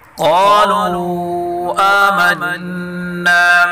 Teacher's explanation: قاف کو پر پڑھیں گے، نون مشدد غنہ کے ساتھ پڑھیں گے